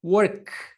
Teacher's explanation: Se vocês tocarem a garganta de vocês e pronunciarem esse K, vocês vão perceber que as cordas vocais de vocês elas não estão vibrando.